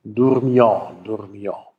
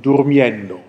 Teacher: Da ist ein U entstanden, auch weil danach ein J-Laut kommt.